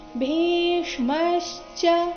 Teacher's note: ಭೀಷ್ಮಶ್ಚ ಭೀ ಮಹಾಪ್ರಾಣ ದೀರ್ಘ ಅದರ ನಂತರ ಅರ್ಧ ಷಟ್ಕೋನ ದೋಷ ಮತ್ತೆ ಪೂರ್ತಿ ಮೀಷ್ಮಶ್ಚ ಕರ್ಣಶ್ಚ ಕರ್ಣಶ್ಚ ಕೃಪಶ್ಚ